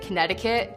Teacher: We pronounce our T's as D's, so we say like Connecticut instead of Connecticut.